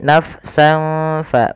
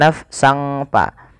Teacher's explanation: bertemu dengan Fa ada huruf Sin berharakat fathatain bertemu dengan Fa maka suara sinnya ini suara tanwinnya dimasukkan ke huruf Fa awalnya nafsan karena bertemu dengan Fa disamarkan surah tanwinnya Dan inilah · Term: bacaan Ikhfa